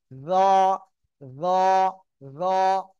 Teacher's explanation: জিব্বার আগা সামনের উপরের দুই দাঁতের আগার সঙ্গে লাগিয়ে জ উচ্চারিত হবে। জ, জ, জ, মোটা আওয়াজে উচ্চারণ হবে